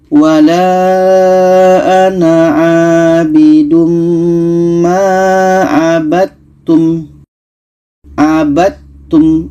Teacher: Sedangkan ta ini bukan qalqalah sifatnya. Maka dal yang asalnya hukum qalqalah tidak jadi kita masukkan ke ta · dal kita masukkan ke ta, tidak jadi qalqalahnya.